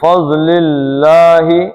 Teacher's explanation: اللہ کا لام پتلا پڑھنا ہے، پیچھے زیر ہے